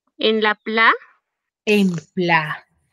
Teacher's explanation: en pla recae la mayor fuerza de voz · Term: antepenúltima sílaba